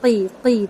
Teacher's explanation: قوف کے زیر کو باریک کریں گے، لیکن قوف کی جو آواز ہے وہ پر ہی ہوگی ، قی قی، ٹھیک ہے، اس کو کی نہیں پڑھیں گے،